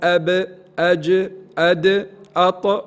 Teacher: كل حرف ساكن من هذه الاحرف كانت العرب تقلقل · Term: حروف القلقله